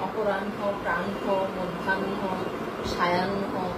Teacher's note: আমরা নটা যোগ করছি পরে উচ্চারণের সময় নটা আগে চলে আসছে আর নটা পরে চলে যাচ্ছে।